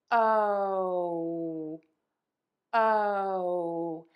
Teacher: My tongue is going to be low, the back is going to be pulled up, but then I'm going to move to a pucker.